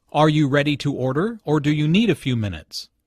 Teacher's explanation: The word or signals a choice here. Notice the rising intonation on order and the falling intonation on minutes.